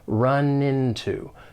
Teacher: When pronouncing this phrase, more linking will occur. We can link the final consonant sound in run with the beginning vowel sound in into, run into. To run into someone or to run into something.